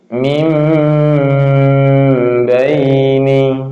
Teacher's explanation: huruf mim dan huruf ba ini kan huruf syafawiyah, huruf bibir. Maka dibacanya boleh bibir ditutup.